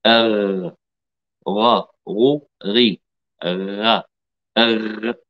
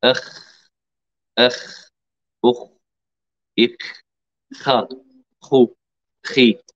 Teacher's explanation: أدنى الحلق، منطقة جذر اللسان مع الحنك اللحمي، مخرج الغين ثم الخاء. الغين مرتفعة قليلا، ما زلنا في الحلق ولكن مرتفعة قليلا.